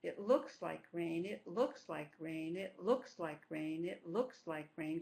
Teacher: There are 3 stresses, but we only have the beat on the first stress and the third stress. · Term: reduce the middle stress